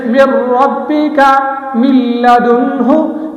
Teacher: ہم میم کو آگے لام کے ساتھ ملا رہے ہیں لیکن غنہ نہیں کر رہے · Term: بلا غنہ